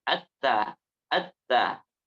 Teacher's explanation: Ujung lidah menempel kepada gigi sari atas bagian dalam dan sampai mengenai daripada gusinya.